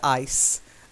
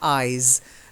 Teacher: ice has the softer ending, and eyes has the z, the vibrating ending